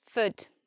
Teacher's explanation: And importantly, we don't say Ford, what Ford. We have a schwa, so it just becomes Fud